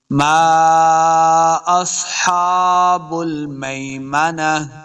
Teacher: فَأَصْحَابُ الْمَيْمَنَةِ ما اصحاب المیمنہ، ما دیکھیں میم کے ساتھ الف ہے، اس کے اوپر چھوٹی مد ہے تو ہم نے اس کو لمبا کیا ہے۔ ما اصحاب سواد حروف مستعلیہ سے اس کو موٹا کریں گے۔